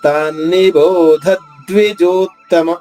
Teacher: బోధ తర్వాత ఆగకుండా ద్విజోత్తమ చెప్పి తీరాలి. ఆఘాతు ఉన్న అక్షరం తర్వాత విరామం తీసుకునే అవకాశం లేదు.